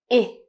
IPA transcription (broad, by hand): ɪ